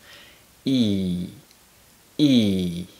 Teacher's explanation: The long E sound is produced by tensing our tongue and pressing it towards the top of our mouth when we make the sound.